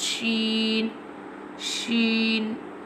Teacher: Sheen pronounced from the middle part of the tongue touching the middle part of the pallet top of the mouth